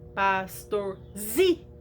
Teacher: Então nesse caso, como polissílaba, porque ela tem mais de 3 sílabas, ela tem 4, e ela é paroxítona, porque a sílaba mais forte é a penúltima